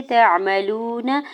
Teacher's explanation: वाव साकिन से पहले लाम के ऊपर पेश है, वाव मद्दा हो रहा है, दौड़ कर खींच के अदा करेंगे। नून के ज़बर को जल्दी से अदा करना है।